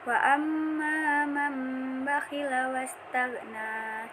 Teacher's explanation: Cara membacanya merubah bunyi huruf nun sukun menjadi bunyi mim. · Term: iklab